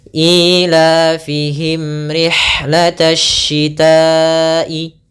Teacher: Apabila ada mim mati bertemu dengan ra, maka kita namakan dengan bacaan izhar syafawi. Yaitu suara mimnya harus kita baca dengan jelas.